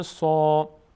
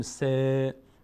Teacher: صاد بعدش الف اومده صدای آ میگیره و از اون حروفی است که پر هم خوانده میشه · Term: پر خوانده